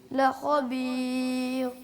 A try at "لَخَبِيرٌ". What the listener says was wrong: یعنی آخری والی را جو ہے خبیر والی وہ باریک ہوگی. خبیر خبیر خبیر. جی ایسے پڑھنا ہے.